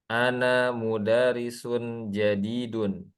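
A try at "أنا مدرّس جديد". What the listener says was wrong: mudarrisun. Ronya bertasydid Ana mudarrisun jadidun.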